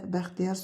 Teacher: Vurğu sonuncu hecaya düşür.